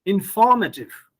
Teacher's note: Now, it's noteworthy here that you see in the first one, we give stress on the syllable may, information. But in the second word, we are giving stress not on may, rather on for, informative. We don't say informative, like information.